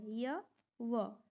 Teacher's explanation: अर्ध स्वर य और व आप सबको पता होगा यह स्वर व व्यंजन के बीच का है